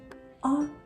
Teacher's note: А ми можемо співати голосом коли ми співаємо її Нам нічого не заважає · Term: голосні